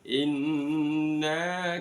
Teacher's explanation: inna nun tajwidnya dibaca gunah mendengung